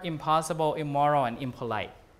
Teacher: M and P are bilabial, right? Bilabial sounds. You made with two lips. So this means that the N, which is alveolar, an alveolar sound, becomes a bilabial sound before another bilabial sound.